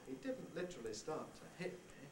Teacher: Da da da da da. Succession of little falls, little part-way falls, one starting on each accented syllable. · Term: sliding head